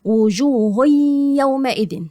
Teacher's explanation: ادغام ناقص بغنه يعني اخش على الياء واعمل ايه غنه